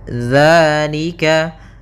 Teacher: bahas padafalalika di sini ada hukum tajwid berupa Mad thbiii yaitu adanya fathah bertemu dengan alif maka kita panjangkan dua harakat dzalika hati-hati dalam pelafalannya hati-hati dalam pelafalan dalal Jangan dibaca dengan